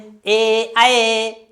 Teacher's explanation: ए कहने से भी गोला गोला नहीं हो रहा है